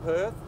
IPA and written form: pɜrθ (Perth)